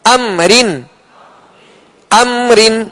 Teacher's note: اظہار شفوی، اس لیے کہ میم ساکن کے بعد نہ ہی دوسری میم ہے کہ ادغام کیا جائے، میم ساکن کے بعد نہ ہی حرف با ہے کہ اخفاء شفوی کیا جائے. میم ساکن کے بعد ان دو حروف حرف میم حرف با کے علاوہ کوئی بھی حرف آ جائے تو وہاں اظہار شفوی ہوگا، یعنی بغیر غننے کے ادا کریں گے